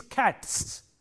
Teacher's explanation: For example, if you have a word like cat, C-A-T, cat, this sound t is a voiceless sound, and therefore, when you make it a plural, it takes a voiceless sound again, s. So, it is cats.